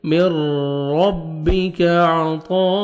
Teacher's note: من ربک، کاف کو باریک پڑھیں گے، من ربک عطاء، عین پڑھیں گے اور طا کو موٹا کرنا ہے آپ نے۔ آگے الف مدہ کے بعد اسی کلمہ میں حمزہ ہے، مد واجب یا مد لازم 3 سے 4 سیکنڈ ایکسٹرا آپ نے مد کرنی ہے۔